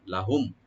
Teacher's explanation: লাম ওপেন থাকবে, আর মিম সাকিন এখানে আমরা এজাহার করব, এখানে গুণা হবে না